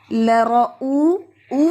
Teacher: زبان جو ہے اوپر کی طرف وائبریٹ کرے، اور یہ ہیوی ہے، لارا نہیں ہے.